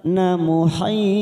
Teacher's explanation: kita panjangkan 4 harokat mat arid li sukun. Dan jangan lupa akhirannya karena terdapat huruf ko yang mati di akhir kalimat maka kita pantulkan kuat, namanya bacaan qalqalah kubro.